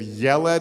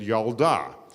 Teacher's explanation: when you make them feminine the e sound changes to an ah